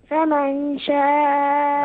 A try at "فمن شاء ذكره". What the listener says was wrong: أين الغنة؟ أين ذهبت بالغنة يا ابني؟ فمن شاء ذكره.